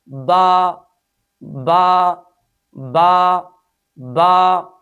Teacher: جب ہم با کو ادا کرتے ہیں تو ہونٹوں کی تری والے حصے کو آپس میں ملاتے ہیں اور اس حرف کو ادا کرتے ہیں۔